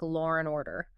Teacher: the silent R kind of reappears when the next word starts with a vowel. For example, in Law and Order, the R at the end of law subtly connects to the A in and, making it sound almost like law and order.